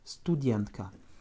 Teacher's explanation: Avec un accent tonique sur le dienka, le dien. Donc comme tout à l'heure, le U ne change pas et le A en finale va se prononcer presque comme un petit E.